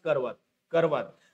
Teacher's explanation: चार अक्षरी शब्दातील दुसऱ्या क्रमांकाचा जो अ असतो म्हणजे र च्या पाठीमागे येणारा अ हा अपूर्ण किंवा निवृत उच्चारला जातो बरोबर हा अर्धवट उच्चारला जातो हा निवृत्त उच्चारला जातो किंवा अपूर्ण